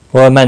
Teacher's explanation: نون ساکن کے بعد حمزہ ہے، اظہار حلقی ہوگا